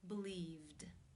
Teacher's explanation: the V consonant sound which is voiced therefore it is again case two where the e D is pronounced as the D sound